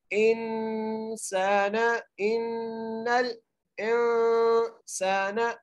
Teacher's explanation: حمزہ کو نون سے ملاتے ہوئے پڑھنا ہے، غنہ کرتے ہوئے پڑھنا ہے، ان نون کو لام سے ملانا ہے، انسان ان الانسان ایسے پڑھیں گے۔